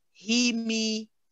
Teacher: And the he and the me should be balanced in that they are both 1 count. We spend the same amount of time on them, and they both should have the same E ending.